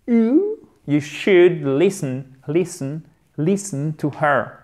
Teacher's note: On ne prononce pas le L, évidemment, on ouvre bien la bouche.